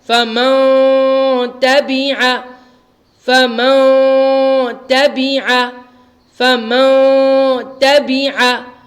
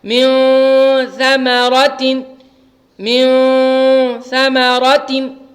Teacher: کیونکہ نون ساکن کے بعد حروف اخفا کے 15 حروف میں سے ثا آیا ہوا ہے, اس لیے یہاں پر نون کی آواز کو ناک میں 1 الف کی مقدار کے برابر چھپا کر غنہ کر رہے ہیں, اخفا کر رہے ہیں.